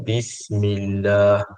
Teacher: lam pada lafzul jalalah itu dinipiskan